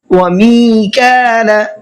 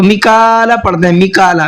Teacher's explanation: می کو بھی کھینچنا ہے اور کا کو بھی کھینچنا ہے